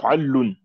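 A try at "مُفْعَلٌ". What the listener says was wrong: Non, muf'alun sans shadda. Muf'alun, tout simplement.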